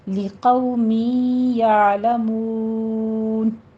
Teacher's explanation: लिक़ौ कौमिन नहीं कहना, क़ौ मी। अब तनवीन के बाद या आ रहा है हुरूफ यमून में से, तो यहाँ भी इदगाम अल गुन्ना होगा, तनवीन का कायदा, और या की साउंड आपने लेकर आनी है।